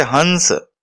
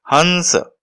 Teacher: इसमें ह के ऊपर काफी जोर देकर उच्चारण किया जा रहा है। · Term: अनुस्वार